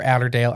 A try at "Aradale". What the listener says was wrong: You're like adding letters that don't exist there. But you got to do it, say it like Australians where they don't pronounce like everything. So it's probably like Ardle.